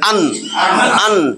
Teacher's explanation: কোনো গুন্না হবে না, গুন্না ছাড়া স্পষ্ট কইরা পড়া। ইজহার অর্থ এটা।